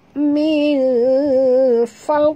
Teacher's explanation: kita kena sorokkan sembunyikan bunyi nun mati ke dalam fa disertai dengung dua harakat · Kalau kita baca cepat fat tak jadi, min fat tak jadi kan, tak jadi tebal. Jadi kita kena baca secara lambat sikit kerana makhraj dad itu adalah daripada tepi lidah hingga ke hujung ya. Min fau, uh, fau tebal dan jangan lantun kerana dad tak termasuk huruf qalqalah, tebal dan hilang dalam mulut. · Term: ikhfa hakiki, huruf dad